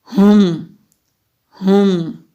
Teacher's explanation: ہم، ہا کو حلق سے نکالیں گے، میم ساکن ہے تو یہاں پر ہم اظہار شفوی کریں گے، یعنی کہ میم کی آواز کو کلیئر ادا کریں گے